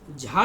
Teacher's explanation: ये जो झा है ये आपका महाप्राण है। महाप्राण है क्योंकि इसके उच्चारण में अधिक वायु निकलती है।